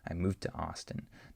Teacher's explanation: The D just blends in with the next T sound.